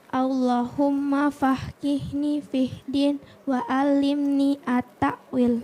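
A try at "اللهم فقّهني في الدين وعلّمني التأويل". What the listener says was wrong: Iya, bukan faqihni ya. Faqihni ya. Qafnya ada 2 ya.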